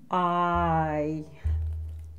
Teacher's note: It can't be up in here because actually two things are happening in your mouth. You're starting with an open mouth and you're going to a closed mouth.